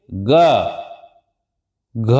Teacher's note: इनको बोलिए और हमारे गले में कंपन सी हो रही है · इन व्यंजनों के बोलने में स्वर तंत्र में कंपन होता है। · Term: सघोष व्यंजन, घोष या सघोष व्यंजन